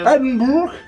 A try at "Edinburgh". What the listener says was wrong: Ce qu'il faut absolument éviter, c'est Edinburgh. Parce que ça, évidemment, ça finit pas par le burg, d'accord? Il faut aussi éviter de dire Edinburgh.